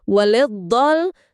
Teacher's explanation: huruf lam sebelum dot itu, waliddall, lamnya tipis, jangan ikut ditebelin kayak dotnya